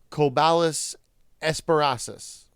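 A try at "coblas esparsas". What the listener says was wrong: It's Coblas. You added an extra A in there for no reason. You got Esperasis, fine.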